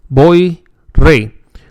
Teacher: The Y, when word final, acts as a semi-vowel. That is, it has a sound similar to the vowel E.